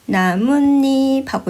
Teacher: 표기에는 없는데 발음을 해 보면 니은 소리가 생겨. 나무 입 발음을 표기에는 니은이 없잖아. · 근데 발음을 해보면 나뭇잎하고 니은이 들어가. 바로 이런 현상을 사이소리 현상이라고 하는 거야.